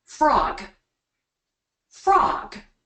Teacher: so here we have K and G so can't go so that's right in the back of your throat